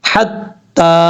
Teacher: یہ تا کے اوپر کھڑا دوبارہ ایک الف کی مقدار لمبا کریں گے۔ تا کے بعد یا ہے، اس یا کو نہیں پڑھیں گے۔